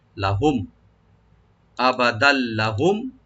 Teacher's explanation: আবাদাল লাহুম, লাহুম লামটাকে ওপেন করে, মিম সাকিন এখানে আমরা এজাহার করব, এখানে গুন্না বা এফা হবে না